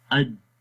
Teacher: جب ہم اج پڑھیں گے تو آواز مخرج میں بند ہو جائے گی، اج، اور ہوتا کیا ہے پھر اس میں آواز بلند ہو جاتی ہے، آواز جو ہے وہ ایک قسم کی سختی پیدا ہو جاتی ہے اور ہمیں دباؤ محسوس ہوتا ہے۔